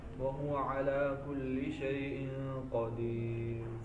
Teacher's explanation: را سے پہلے یا ساکن آ جائے تو را بریک ہی ہوتی ہے